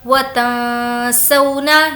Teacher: یہاں پر نون کی آواز کو ہم ناک میں چھپائیں گے کیونکہ نون ساکن کے بعد سین ہے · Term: اخفا